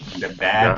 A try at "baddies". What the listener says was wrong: Not with a T.